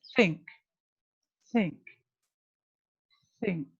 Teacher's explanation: you don't feel the vibration and you feel the air coming out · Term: voiceless